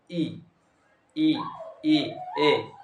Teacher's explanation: हमारी जो जबान है वो आगे की ओर होना चाहिए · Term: अग्र स्वर